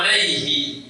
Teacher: dia hadamir ada, sebelumnya sukun, setelahnya harokat, walaupun dibaca wasal dia tetap dibaca pendek.